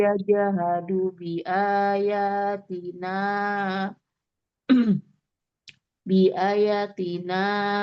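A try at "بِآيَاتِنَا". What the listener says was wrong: Bi aya, A-nya panjang. A-nya panjang.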